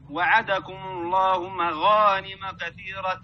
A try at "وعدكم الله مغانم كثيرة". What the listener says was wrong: لا تختلس وعدكم الله وعدكم الله.